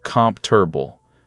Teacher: In natural speech, it's more like comf-ter-ble. Three beats, not four.